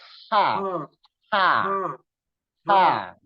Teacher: Ha itu makhrajnya itu dia adanya di tengah-tengah tenggorokan. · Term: ha tipis